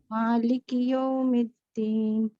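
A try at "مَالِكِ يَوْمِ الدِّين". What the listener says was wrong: اچھا مگر ابھی یو ہے، او ساؤنڈ ہے. Round lips. یو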